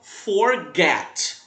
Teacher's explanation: A gente fala forget, então o get é a sílaba tônica